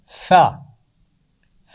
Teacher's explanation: ثا زبان کی نوک اور اوپر کے دانتوں کی نوک سے لگا کر ادا ہوتا ہے